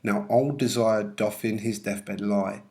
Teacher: it follows iambic pentameter with five two-syllable feet, stress on the second syllable.